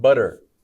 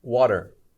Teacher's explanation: Or even words like water. We don't say t, we usually say d, water. That's very common, but it also depends on where you're from in the English-speaking world, how you pronounce that, if it's more of a t or a d. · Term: a D sound